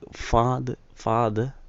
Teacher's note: the r sound toward the end of the word it is silent